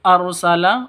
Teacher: ro-nya ro tafkhim tebal, ya, ro tafkhim harus ditebalkan. Arsala, seperti itu, bukan arsalah tapi arsala, seperti itu ya.